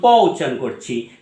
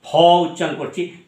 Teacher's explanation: আমি যখন প উচ্চারণ করছি তাতে কতটা শ্বাসবায়ু লাগছে, আর যখন ফ উচ্চারণ করছি তাতে শ্বাসবায়ু কতটা লাগছে